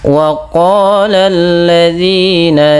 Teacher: Pada lafal waqala di sini lafal huruf qof dipanjangkan sepanjang dua harakat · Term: mad thbi'i